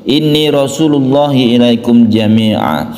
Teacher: Tanwin fathah yang berhenti atau diwakafkan itu menjadi fathah biasa yang dipanjangkan. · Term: mad iwad